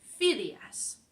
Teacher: So if it does end in N, S, or vocal, then we put the stress on the penultimate, the second to last syllable